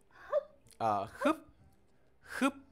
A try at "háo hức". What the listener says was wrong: À, không, không có close nha em. Mở, em mở miệng. Đúng rồi, háo hức.